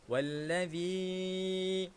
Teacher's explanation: Okey, ada huruf zal dekat sini. Ada huruf zal. Jadi kita kena keluarkan lidah